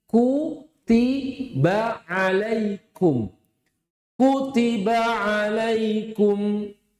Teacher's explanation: Kan kaf tadi juga memiliki sifat syiddah. Hamesnya kaf tidak boleh setara dengan syiddahnya kaf. Sehingga ada orang membaca kitabun, nggak boleh.